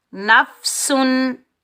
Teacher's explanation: نون کو ہم فا ساکن کے ساتھ ملائیں گے، بغیر کھینچے پڑھیں گے۔ سین سختی اور سیٹی والا حرف ہے، تو سین پر ہم سیٹی کی آواز نکالیں گے